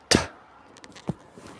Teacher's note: It is a voiceless alveolar plosive. It is pronounced by placing the tip or blade of the tongue against the alveolar ridge to briefly block airflow from the lungs before releasing it with a small burst of air.